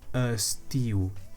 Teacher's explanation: However, for the third word, estiu, that E is not actually an E when it sounds, but a neutral vowel because it is not stressed. So you say estiu.